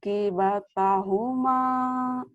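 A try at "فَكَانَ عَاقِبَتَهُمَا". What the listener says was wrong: Fakana'a, tuh tekan di A ya. Fakana'a kibatahuma. Fakana akibatahuma.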